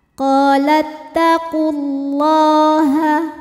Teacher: Lam jalalah dibunyikan secara tafkhim, sebab harokat huruf sebelumnya dhammah, maka lam dibaca dengan tebal, pangkal lidah angkat.